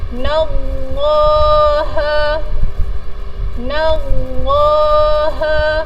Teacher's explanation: huruf sebelum kalimah Allah adalah berbaris atas, jadi kita perlu bacakan kalimah Allah ini dengan tebal